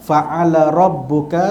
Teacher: ra berbaris di atas, ra tebal. Fa'ala rabbuka, sekali lagi rabbuka tu, ra tu tebal, berbaris di atas.